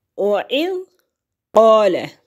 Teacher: قاف کا جو مخرج ہے زبان کا پچھلا حصہ اٹھتا ہے اور تالو کے نرم حصے کو مس کرتے ہوئے قاف ادا ہوتا ہے